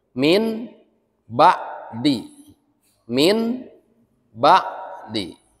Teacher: Mengganti asalnya bunyi nun mati menjadi huruf mim. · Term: iqlab